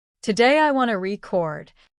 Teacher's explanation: accidentally placed the stress on the second syllable, which turned the word into the verb record instead